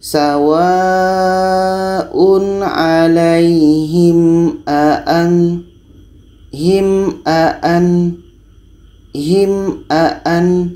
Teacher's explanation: Huruf 'Mim' dan 'A' terdengar jelas dan tidak ada suara sengau. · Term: Izhar Syafawi, izhar syafawi